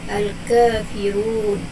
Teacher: Okey, ra baris hadapan dan huruf sebelumnya berbaris bawah, iaitu fa berbaris kasrah, baris bawah. Jadi ra dibaca dengan tarqiq nipis